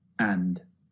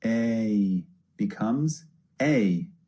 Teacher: you can hear the difference in the length this is because a is actually two vowels pushed together to make one sound a becomes a so it's a longer vowel sound than a